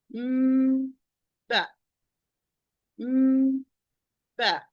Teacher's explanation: I start by closing the two lips because both are articulated the same way. I start by closing the two lips, but with a complete ghunna, and then I start the pronunciation of ba. The lips are still closed, and then I open the lips, the two lips, or the two lips are part of, to finish the articulation of ba. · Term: ikhfa shafawi